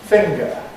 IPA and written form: ˈfɪŋgə (finger)